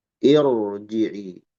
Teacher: Kaidahnya hamzah was itu dibaca kasrah. Karena kasrahnya bukan asli, maka ro jadi tebal.